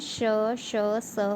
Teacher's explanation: इन वर्णों का उच्चारण करते समय हवा मुख से रगड़ खाती हुई निकलती है। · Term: ऊष्म व्यंजन